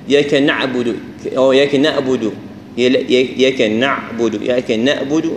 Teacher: العين احدى الاخطاء نطقها بصوت عايم او اشبه بالالف